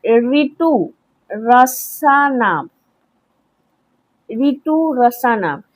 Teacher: जो ऋ स्वर है उसका उच्चारण स्थान जो है वो मूर्धा है